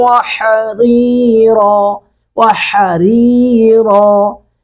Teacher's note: ہا کو حلق سے ادا کریں گے، ری را کے نیچے زیر ہے، اس کو باریک کریں گے۔